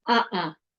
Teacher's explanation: this in Spanish um uhuh so that little quick closure one closure of the throat is the glottal stop